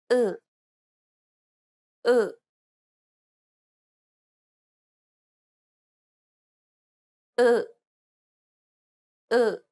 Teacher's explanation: This vowel doesn't exist in English. To pronounce this sound, first try to pronounce the U in true. From there, try to unround and spread your lips.